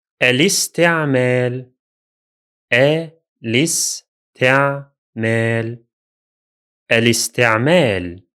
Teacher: the Hamza is no longer at the beginning of pronunciation or at the beginning of the speech, because we added al before it. As a result, it becomes silent. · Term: Hamzat al-waṣl